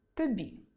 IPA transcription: т о б і